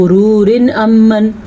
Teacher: وقف نہ کرنے کی صورت میں ہم نے پڑھنا ہے غرور امن، پھر را باریک ہے کیونکہ را کے نیچے زیر ہے